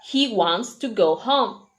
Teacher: go and home are the words that keep the Rhythm they are the ones that are heard the must he wants